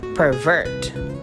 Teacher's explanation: if we are going to put the stress in the second syllable, it will become a verb